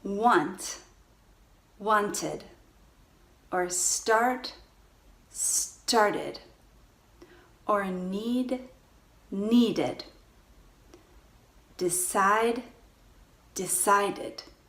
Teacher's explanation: When we add ed to the words which end with T and D sounds, then we clearly hear the ed ending. And we get another full syllable.